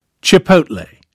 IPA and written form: tʃɪˈpəʊt.leɪ (chipotle)